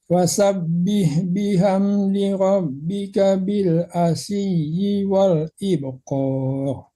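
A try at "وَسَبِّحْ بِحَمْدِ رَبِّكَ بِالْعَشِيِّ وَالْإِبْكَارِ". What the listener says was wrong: Ibkar, tipiskan kafnya Pak ya. kaf kecil juga, jangan tebalkan kafnya, tipiskan.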